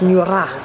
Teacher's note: it's like a Scottish R, so it's Nura, it's a rolled R